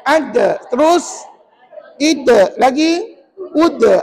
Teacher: hujung lidah ditekan ke pangkal gigi kacip atas. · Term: sebutan dal